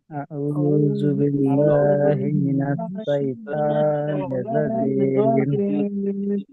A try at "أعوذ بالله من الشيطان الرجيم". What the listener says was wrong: শয়তানের রাজিম এরকম নেই কোনো, শাইতানি ওখানে তো আছে, শাইতান। আউযু বিল্লাহি মিনাশ শাইতানির রাজিম।